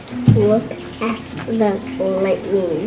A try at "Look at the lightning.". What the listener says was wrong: Awesome.